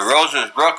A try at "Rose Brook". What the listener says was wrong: Brook. You don't say roses, it says a rose. No S on the end of it. We called it roses, but it says Rose Brook.